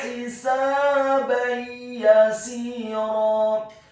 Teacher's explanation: Kata hisaban yasira, huruf ha-nya dibaca tipis, tarqiq, kasrah 1 harokat. Huruf sin-nya dibaca fathah 2 harokat karena setelahnya ada alif.